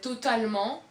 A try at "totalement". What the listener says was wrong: So you don't even say the T correctly. Totalement. But it's a T totally in English, but in French it's totalement.